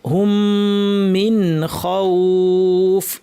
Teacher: এই নুনটাকে স্পষ্ট ইজহার করে পড়তে হবে, গুন্না থাকবে কিন্তু গুন্নাকে বাড়াবো না।